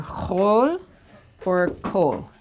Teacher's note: instead of reading the kamatz like an ah sound, it's read like an aw or an o sound